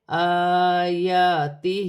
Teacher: الف پر کھڑی زبر ہے، الف حمزہ بھی پڑھا جائے گا اور ایک الف کی مقدار کھینچ کر بھی پڑھا جائے گا، یا پر بھی کھڑی زبر ہے، ایک الف کی مقدار کھینچ کر پڑھا جائے گا۔ ہا کے نیچے کھڑی زیر ہے، یہاں بھی ایک الف کی مقدار کھینچ کر پڑھا جائے گا